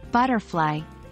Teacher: in the word butterfly we stress the first part butter and not the second part fly